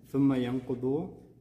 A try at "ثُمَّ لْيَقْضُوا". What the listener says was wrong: ثم ليقضوا. ثم ليقضوا. Did you write the lam? ثم ليقضوا.